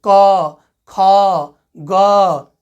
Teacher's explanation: देखो हम क बोलेंगे तो कंठ से निकलेगा, क कहाँ से निकल रहा है, कंठ से, क, ख, ग।